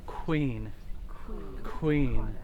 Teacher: that's a rounded aspirated K and that's the same sound in English